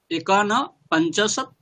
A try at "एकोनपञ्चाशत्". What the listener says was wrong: एकोन, ए ओकारे दीर्घ, एकोन बोलুন, एও दीर्घ করুন, एकोनपञ्चाशत्। एकोनो ना, एकोनपञ्चाशत्।